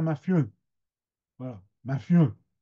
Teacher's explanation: la nasalisation, elle n'est pas marquée sur les en comme à Amiens. Elle va au-delà de ça, elle va sur les u, les e finaux des mots. Et donc, mafieux, ça devient mafieux.